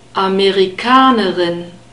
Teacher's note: rub it at the back between the back part of the tongue and the uvula don't roll it